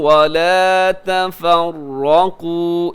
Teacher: اس میں را بھی موٹا قاف بھی موٹا ہے · جمیعا یہاں پہ ہے ادغام، کیونکہ تنوین کے بعد واو ہے، ادغام کیجیے گا غنے کے ساتھ